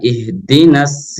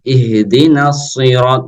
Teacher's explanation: dengan Sin ihdinas sirot itu huruf Sin yang benar adalah ihdinaṣ-ṣir jadi agak monyong sedikit ya ketika membaca huruf shod karena termasuk huruf tafkhim